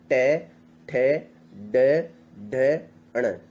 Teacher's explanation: ये मूर्धा से निकल रही है